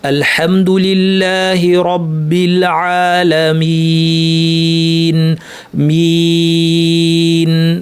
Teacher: মিন বলার সময় শুরুতে মিম, শেষে নুন, দুইটাই নাক, মাঝখানে মাদ্দের মধ্যে নাক নাই · তেলাওয়াত নাকি হবে না। অনেকে আইনের মধ্যে নাক নিয়ে আসে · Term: গুন্না